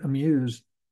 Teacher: when you say amuse you spend very very little time on the a you you it's like you're trying to rush to get to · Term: reduced vowels